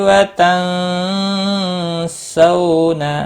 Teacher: نون ساکن کے بعد حروف اخفا کا سین آیا ہے، اخفا حقیقی ہوگا